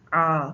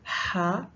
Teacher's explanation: ये आईन में थोड़ा सा तंग हो जाता है और हा की अदायगी में थोड़ा सा खुल जाता है